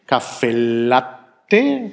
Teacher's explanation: In jedem Fall wird ein langes L gesprochen.